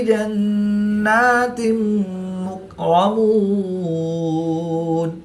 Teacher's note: 2 زیر کی تنوین کے بعد میم حروف غیر معلوم میں سے ہے تو یہاں پر ادغام مع الغنہ ہوگا